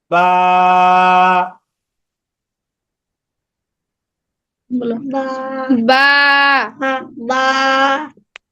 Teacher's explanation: তো বা যখন উচ্চারণ করব তখন 2 ঠোঁটের ভিজা অংশ একসাথে মিলিয়ে উচ্চারণ করতে হবে।